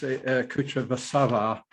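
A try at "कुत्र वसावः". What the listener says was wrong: I'm just going to pick you up on the length of the vowel. You say Kutra Vasati. In fact, it's a short A, Kutra Vasati. Yeah, there's in English we've got quite a strong tendency to make certain vowels short or long depending where they appear in a verb, in a word, in any word. But it can make a big difference between short and long in Sanskrit too.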